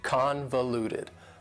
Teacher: Convoluted also has 4 syllables, and the stress is on the first syllable